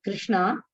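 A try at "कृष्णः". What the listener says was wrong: Krishnaha na vadati, not Krishnana. Krishnaha. Krishnaha.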